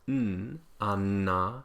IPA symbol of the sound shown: n